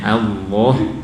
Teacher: huruf lam tadi itu ada kondisi tebal yaitu pada lafal Allah